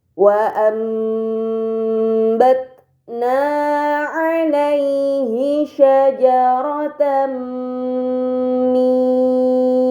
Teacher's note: nun sukun yang bertemu dengan huruf ba ini dinamakan iqlab nun sukun tersebut harus dibaca mim dengan gunah yang dipanjangkan